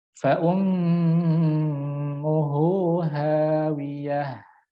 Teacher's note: Rasakan bahwa ketika mim tasydidnya keluar daripada rongga hidung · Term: gunah